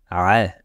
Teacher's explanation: Sache que le son va se former au milieu de la gorge au niveau de l'épiglotte. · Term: la lettre ayn